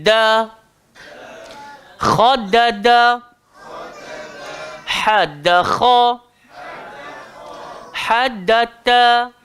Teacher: boleh rasa tak ta dengan da, tempat dia sama keluar. Dia langgar belakang gigi. Cuma dal dia sederhana.